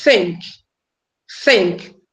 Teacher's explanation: there's no vibration in our vocal cord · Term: soft sound